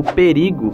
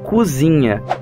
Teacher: todas as vogais se tornam Altas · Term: vogal alta